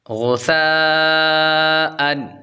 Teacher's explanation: ثا کو نرمی کے ساتھ پڑھیں گے اور آگے مد ہوگی مد متصل